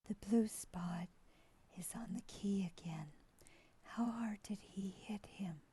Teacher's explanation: When I listen to this voice, the thing I hear the most is a weak and breathy quality.